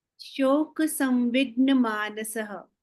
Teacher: you pronounce the visarga with the little shadow vowel